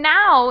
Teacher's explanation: now is more of an ah sound instead of an o. It's now. A little more nasally there. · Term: vowel sound